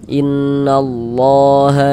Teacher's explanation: lafaz Allah dibaca panjang ee mad thbi'i panjangnya dua harakat · Kemudian di sini ada huruf ro memiliki ini ya harakat dah dommah atau tanda baca dhammah. Maka ini huruf ro memiliki harakat domah nih ya tanda baca damah maka huruf ro juga dibaca tabkhim baca tebal